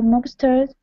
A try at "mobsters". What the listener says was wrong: instead of mob Mobsters it's going to be an a sound